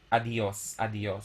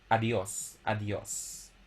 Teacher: instead of producing two separate vowels, we pronounce them as one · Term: a diphthong